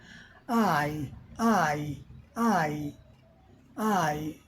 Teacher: अ से इ की तरफ आती है।